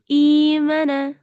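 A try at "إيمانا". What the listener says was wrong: মা টান হবে না? মাশাআল্লাহ, এখানে সবগুলো হরফেই টান আছে।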